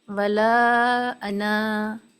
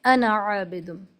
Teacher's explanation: اس کی وجہ یہ ہے کہ اچھا اس کے پڑھنے کی دو صورتیں ہیں. ولا کے بعد انا پہ اگر آپ پڑھ کر رک جائیں، ولا انا، تو آپ کھینچیں گے اس کو، اور اگر نہیں رکیں تو بغیر کھینچے پڑھیں گی